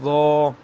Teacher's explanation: جو ضا ہوتی ہے اس کی زبان آپ کی سامنے والے دانتوں سے لگتی ہے